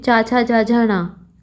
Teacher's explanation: इन सभी का उच्चारण किससे किया जाता है? तालु से किया जाता है। तालु का प्रयोग किया जाता है इनका उच्चारण करने के लिए। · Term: चा वर्ग